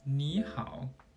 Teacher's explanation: The first is when 2 third tones stand together. The first third tone changes to a second tone.